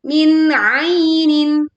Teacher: kita membacanya dengan menjelaskan bunyi nun sukun, tidak melebur dan juga tidak memantul